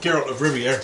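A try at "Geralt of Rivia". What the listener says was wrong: So I'm just Rivia. You're saying air at the end. You're saying Riviera.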